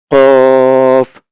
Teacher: জিবার গোড়ার অংশ তালুর সঙ্গে লাগিয়ে উচ্চারণ হবে